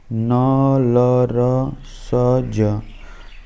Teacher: और दंत में जी दांत को छुए गी वसर को त्स्य इनके उच्चारण में दांतों को अंदर का मसूड़ा छू जाता है